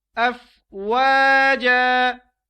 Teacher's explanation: جب ہم نے اس پہ وقف کیا تو یہ وقف کی حالت میں افواجا بن جائے گا